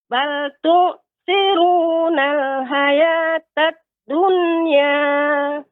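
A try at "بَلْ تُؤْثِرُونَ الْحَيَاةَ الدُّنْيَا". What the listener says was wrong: Ya, huruf ha lebih lembut lagi Ibu pengucapannya. Ha, ya. Bal tu'thiruna al-hayatad dunya.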